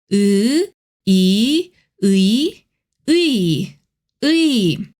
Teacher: Think of as a flat helper sound. Your lips stay still and it slides into e. When and e come together, we get 의.